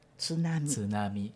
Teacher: na pronúncia da língua japonesa não tem sílaba tônica e que, né, não se coloca essa sílaba tônica na penúltima sílaba também, né?